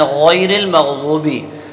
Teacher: تو غین جو ہے آخری حلق سے ادا ہوتا ہے